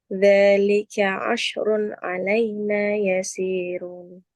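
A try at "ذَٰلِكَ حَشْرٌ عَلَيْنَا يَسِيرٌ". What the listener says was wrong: Hasrun, Bu. Pak itu ha.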